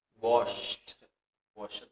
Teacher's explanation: maka D ataupun ED akan dibaca dengan yang namanya suara T.